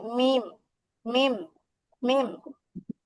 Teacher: ঠোঁটের ভেজা অংশ থেকে উচ্চারণ হবে, ভেজা অংশ থেকে, হ্যাঁ, মানে ঠোঁটের ভিতর দিককার যে ভেজা অংশ, সেখান থেকে উচ্চারণ হবে মিম, মিম।